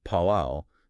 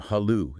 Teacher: Around the 10th century, there was a widespread linguistic shift where the initial P sound in Old Kannada softened into an H sound